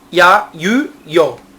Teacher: Essas três que estão aparecendo aí são basicamente uma semivogal e uma vogal. Um ditongo, onde a semivogal é lida de forma rápida e a vogal é mais demorada.